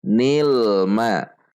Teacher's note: Nil tidak memantul, tidak memanjang.